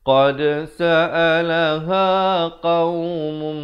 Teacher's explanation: Asalnya qaumun, mun, tetapi bila datang mim masuk beserta dengung, jadi mum 2 harakat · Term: idgham bi gunnah